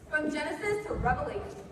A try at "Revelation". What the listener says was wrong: It's pronounced Revelation, not Revelations.